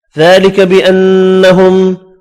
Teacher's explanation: ذالک بانہم، کھڑی زبر کو ایک الف کی مقدار میں کھینچ کر پڑھنا ہے. نون مشدد پر غنہ کریں گے، میم کا اظہار ہوگا